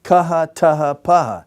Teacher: It was basically, if you will, an unvoiced letter with aspiration. They would just deaspirate it and they would give the unvoiced letter.